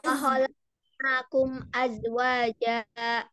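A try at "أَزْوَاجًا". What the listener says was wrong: Ya, ahsanti. Jadi nggak aja lagi ya, tapi azwaja. Karena za dan ja itu makhrajnya berbeda.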